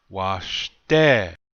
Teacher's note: Notice the accent is on the second syllable.